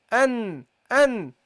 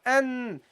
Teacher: Nasal sound, yes. When you say an, you will feel vibration in the nasal area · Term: gunna